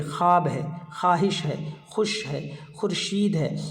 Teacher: और तीसरी किस्म जो सबसे इम्पोर्टेंट है वो है वाव मादुला। ये वाव लफ्ज़ में लिखे होने के बावजूद पढ़ी नहीं जाती है। ये वाव लफ्ज़ में लिखे होने के बावजूद पढ़ी नहीं जाती है, बल्कि इसका तलफ़ुज़ जो है अक्सर व बेशतर अलिफ से या इससे पहले वाली जो हरकत है उस हरकत से इसका तलफ़ुज़ किया जाता है।